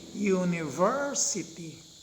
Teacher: so the third syllable is stressed or accented where we put the emphasis that syllable is stressed or accented